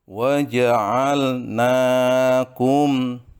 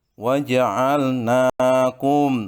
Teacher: mim mati bertemu dengan shin, itu namanya idhar safawi, harus dibaca dengan jelas, tidak boleh dihunahkan.